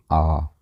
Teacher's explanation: तो आप इनको एक एक करके देख सकते हैं कि जितने भी हमारे दीर्घ स्वर हैं इनमें टाइम जो है वो लघु स्वर का 2 टाइम्स लग रहा है